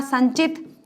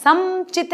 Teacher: संचित में भी म नहीं आया है, समचित नहीं आया है, संचित, न की ध्वनि आई है